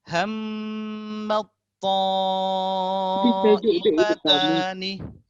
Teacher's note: ada ta yang pertama ta ini mati, yang kedua to hidup, dia boleh langsung ke to. Huruf ta tak dibaca.